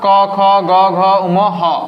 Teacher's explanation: এগুলোর উচ্চারণের স্থান হচ্ছে কন্ঠ